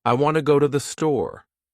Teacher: In this sentence, want and store are stressed and the other words are said quickly and softly. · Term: Sentence stress